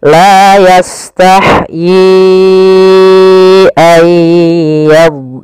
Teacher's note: awalnya yi 2 harokat bertemu hamzah, maka menjadi 4 harokat. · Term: mad jaiz munfasil